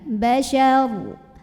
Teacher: Huruf ro apabila berhenti disukunkan dan dibaca secara tafkhim.